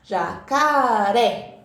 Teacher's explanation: de falar né Por exemplo jacaré vai lá em cima né o tom da nossa voz vai alto fica forte Então essa é a sílaba tônica aquela que eu falo mais